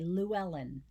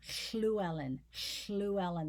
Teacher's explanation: there's a fricative sound coming alongside a liquid so it's a combining of a fricative and a liquid · It's a lateral production on both sides, a lateral sound.